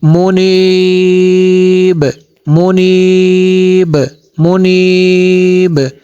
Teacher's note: دال پہ یہاں پہ قلقلہ ہے